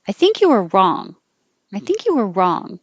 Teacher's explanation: if you um put the emphasis on wrong now you're really putting the focus on being direct